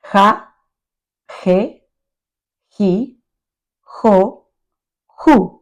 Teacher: The h sound has the sound of a strongly aspirated H. You can feel it in the back of your throat.